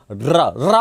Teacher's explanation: रा बोलने में जीवा पहले कंपन करती है, इसलिए इसको प्रकंपित कहते हैं। और प्रकंपित के साथ साथ ऐसा लगता है जैसे ये इसके उच्चारण में ये जीवा से लुढ़क रहा हो, इसलिए इसको लुंठित वर्ण भी कहते हैं।